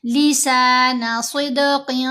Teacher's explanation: صاد کو دال سے ملاتے ہوئے قلقلہ کریں گے، قاف کو موٹا پڑھیں گے۔